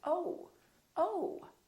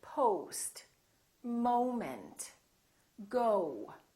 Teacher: So it's actually two sounds, it's O and U together. So you have to move your mouth from O to U